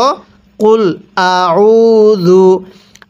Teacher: আমরা এই আইনটা পড়ার সময় গলার মধ্যে একটু চাপ দিয়ে পড়ব